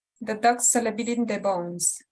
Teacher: where you put the emphasis or where you lean on the phrase is on dog and bones. That's where it's kind of two places, like two armrests where you help yourself make sense of the rhythm of the sentence.